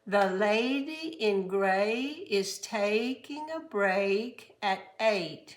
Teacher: Long A, two little sounds. The lady in gray is taking a break at 8.